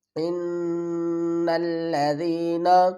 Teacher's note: نون پر گنہ کریں گے، نون کو لام سے ملائیں گے